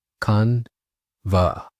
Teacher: it's a two-syllable word with the emphasis on the first syllable, con.